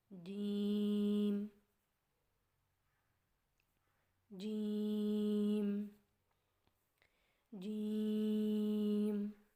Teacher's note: جیم کی ادائیگی میں زبان کے درمیان کو تالو کے ساتھ سختی سے لگا کر باریک آواز میں پڑھیں